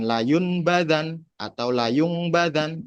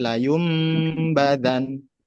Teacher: nun sukun atau tanwin bertemu dengan huruf ba. Dibacanya dileburkan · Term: iklab